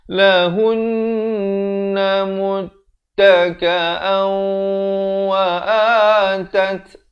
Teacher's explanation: tanwin bertemu waw, idgham bi ghunnah masuk beserta dengung di sini 2 harakat